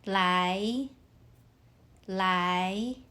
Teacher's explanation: 来 uses the second tone. Your voice rises like you're asking a question.